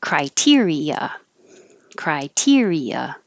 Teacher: two vowels together that are in separate syllables because you hear each of them